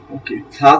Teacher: জিহবাটা একদম দাঁতের মাঝখানে সামনের দাঁতের দুই দাঁতের মাঝখানে চলে আসবে